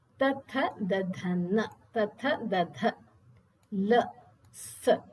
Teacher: ಬರುವಂತದ್ದು ದಂತ್ಯಹ ವರ್ಣಹ ದಂತ್ಯಾಹ ಅಂದ್ರೆ ಅಲ್ಲಿ ದಂತದ ಒಂದು ಉಪಯೋಗ ಆಗ್ತದೆ ಲ್ ಈ ನಾಲಿಗೆ ಜುಹ್ವ ಅನ್ನುವಂತದ್ದು ದಂತಕ್ಕೆ ತಾಗುತ್ತದೆ